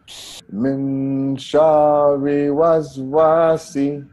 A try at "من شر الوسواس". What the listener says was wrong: الوسواسي. There is lam here. We have to pronounce it. This is Hamzatul Wasl. We can't pronounce it. But we have to pronounce the lam.